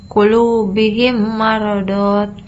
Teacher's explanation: Yang ketiga ada idgham mimi, adalah apabila ada mim sukun atau mati bertemu dengan huruf mim. Cara bacanya adalah dengan melembutkan dua bunyi mim tersebut menjadi satu disertai dengan guna atau dengung